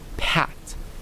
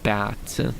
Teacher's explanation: P as in pat is voiceless and then B as in bat is voiced